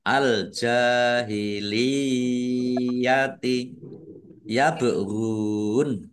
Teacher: Ba sukun bacaan qalqalah dibaca memantul ditampakkan pantulannya